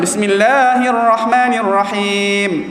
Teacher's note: Panjang sikit. Nak zahirkan bunyi mim yang mana makhraj dia keluar ikut hidung.